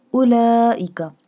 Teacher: Stretch the lam because it has a long mud and standing fatha sign.